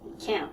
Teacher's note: it's like nasal it's cut off